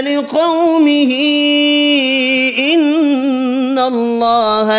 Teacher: لِقَوْمِهِ إِنَّ اللَّهَ، یہاں بھی قاف حروف مستعلیہ پر پڑھیں گے، قو واو لین ہے، چھوٹی مد تین الف کی مقدار میں کھینچ کر پڑھیں گے، نون مشدد پر غنہ کرنا ہے، اللہ کا نام والا لام زبر کی وجہ سے پر پڑھیں گے۔